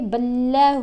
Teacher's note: ہا کے اوپر کھڑا پیش ہے نا، تو اس کو ایک الف جتنا لمبا پڑھیں گے۔ حروف مدہ اور کھڑا زبر کھڑا زیر کھڑا پیش، ان کو ایک جیسے طریقے سے ہی پڑھتے ہیں، یعنی ایک الف جتنا لمبا پڑھتے ہیں۔